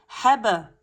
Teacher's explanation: on a la petite qalqala surra parce qu'elle se retrouve entre 2 lettres